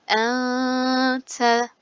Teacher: ihfamız var çünkü cezimli nundan sonra ihva harflerimizden t gelmiş. Genizden gunneli okuyorum.